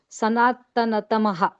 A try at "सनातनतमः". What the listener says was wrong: Yeah, tama, not tamaha. Tamah.